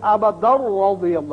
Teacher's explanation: اس لیے کہ تنوین را سے ملے گی ادغام بغیر غنہ ہوگا